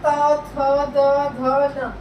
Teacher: जो हमारी टंग है, हमारे टीथ को टच करेगी, हमारे दांतों को टच करेगी। बिना टच करे आप ये वाले वर्ड नहीं बोल सकते, आप खुद ही प्रोनाउंस करके देख सकते हैं।